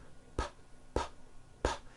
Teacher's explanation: sound PP PP you feeling any vibrations in your throat no your vocal cords are not producing a sound